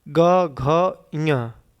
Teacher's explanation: अब घोष व्यंजन में आपके तीसरा चौथा और पांचवा जो आपका व्यंजन है वो आपके घोष व्यंजन में आते हैं। जैसे ग घ ञ बोलने में स्वर तंत्रियों में थोड़ा थोड़ा कंपन होता है